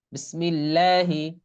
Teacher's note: আল্লাহ শব্দের লামের ডানে যদি জের বা কাসরা থাকে তবে উক্ত লামকে বারিক বা চিকুন করে পড়তে হয়।